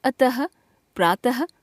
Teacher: विसर्ग इस ध्वनि का उच्चारण ह के समान होता है।